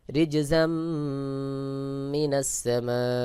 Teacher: ঝা মিম জবর জাম যার উপরে তানীন রয়েছে দুই জবর তানভীন তানভীনের পরে মিম ইদগামের হরফ এখানে মিমকেও মিলায় পড়তে হবে